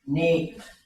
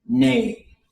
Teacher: Ne, long and high. And there's one other option. Ne, long and low.